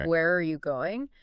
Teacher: if you're asking a question that starts with who, what, where, when, why, or how, like where are you going, your voice usually goes down at the end. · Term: falling intonation